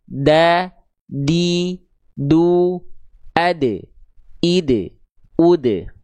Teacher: Ujung lidah kita disentuhkan ke pangkal gigi seri atas. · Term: huruf dal